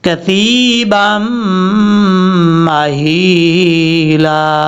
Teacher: با کو جب میم سے ملائیں گے تو یہاں پہ ادغام یرملون کا غنہ ہوگا · وکانت الجبال کثیبا مہیلا، با کو میم سے کنیکٹ کریں گے، تھا بغیر سیٹی کے ساتھ پڑھیں گے